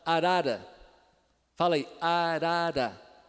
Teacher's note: foi a ponta da língua batendo rapidamente no ponto que a gente chama de alveolar que é um pouquinho pois da região dos dentes chamada aquela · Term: vibrante simples